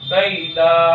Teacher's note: یا ساکن سے پہلے زبر ہے اس لیے یا لین ہوگا۔ یا لین کو نرم آواز کے ساتھ جلدی پڑھے، اس کو لین کہتے ہیں۔